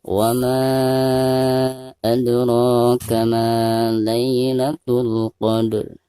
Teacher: maka dihukumi mad jaiz munfasil dan dibacanya bisa 4 sampai 5 harokat